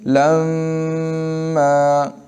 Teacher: میم اگر مشدد ہو تو اس میں غنہ ضروری ہے، غنہ کہتے ہیں ناک میں آواز لے جانے کو